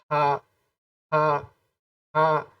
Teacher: اسی طرح ہا کی ادائیگی جب آپ کریں گے تو آپ کے حلق سے آپ کا جو کنٹھ ہے یہاں سے اگر آپ ادائیگی کریں گے تو بڑا ہا یعنی ہا، اور اگر چھوٹے ہا کی ادائیگی کریں گے تو آپ لمبی سانس لیں گے، آپ کی ادائیگی تھوڑا اور اندر یعنی پیٹ سے ہوگی